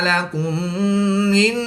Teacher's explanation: میم ساکن کے بعد دوسری میم ہے تو یہاں پر ادغام شفوی ہوگا، یعنی غنہ کر کے پڑھیں گے